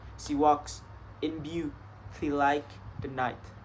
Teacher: iambic tetrameter, which means there are 4 iambs or unstressed and stressed in each line